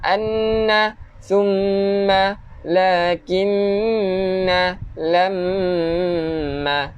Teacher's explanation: Wajib untuk kita dengung dua harokat. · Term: wajibal gunnah